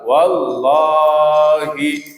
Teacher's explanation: Lafadz jalalah setelah fathah dibaca kental. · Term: tebal